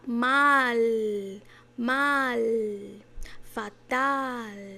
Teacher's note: todas as palavras que tiver o L no final, o L vai estar bem lá no céu da boca